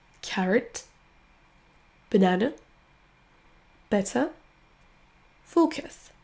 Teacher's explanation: Mais le son qu'on prononce à chaque fois est le même. C'est le son schwa.